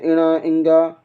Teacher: अनुनासिक जिनका उच्चारण मुख और नाक से होता है